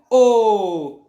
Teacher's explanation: और होठों का योगदान है, क्यों योगदान है, क्योंकि होठ आपके घूम रहे हैं, मतलब गोल बन रहे हैं ना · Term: कंठोष्ठ